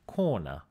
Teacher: the dialect of New York City, where some people would say something like corner without the R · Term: non-rhotic dialects